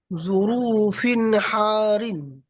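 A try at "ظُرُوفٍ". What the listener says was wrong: জুরু টান কেন দিচ্ছেন? এই জুরু রটা কেন টান দিচ্ছেন? জুরুফিন হারিন, জুরুফিন হারিন।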